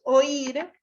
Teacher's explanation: Es aguda, ¿está? Puesto que está acentuada en la última sílaba.